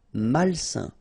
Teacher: A-I-N together, it's a nasal and it's un.